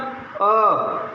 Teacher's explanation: मध्य स्वर अ, ऐसा कहते ही मध्य में ही जिह्वा टिकी हुई रहती है, इसलिए इसे मध्य स्वर कहेंगे।